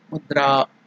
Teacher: There in the dra, a is elongated. That is dirgha.